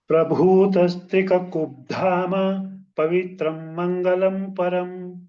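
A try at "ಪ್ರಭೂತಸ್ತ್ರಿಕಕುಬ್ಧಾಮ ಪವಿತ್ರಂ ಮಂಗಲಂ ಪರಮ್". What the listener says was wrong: ಅಲ್ಲಿ ಪಾಸ್ ಕೊಡಬೇಡಿ ಮಹೋದಯ ಪೂರ್ತಿ ಹೇಳಿ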